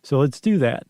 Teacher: I added a little vocal fry there at the end